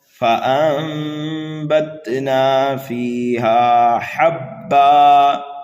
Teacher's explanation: ثم شققنا الارض شقا فانبتنا فیہا حبا. نون ساکن کے بعد اگر حرف با آ جائے تو وہاں پر اقلاب ہوتا ہے، یہاں پر غنہ کر کے پڑھیں گے.